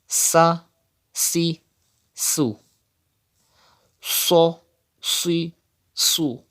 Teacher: Sod is from mustalia letters, so that's why you have to read with thicker voice.